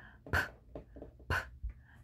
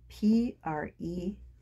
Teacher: my lips come together and then they quickly push a little bit of air through them